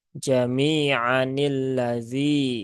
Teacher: nah ketika di wasal ini alifnya tidak dibaca ya Jadi bukan jamianilladzi ya tetapi nunnya di sini pendek